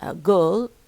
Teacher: Girl, which is a long vowel, long central vowel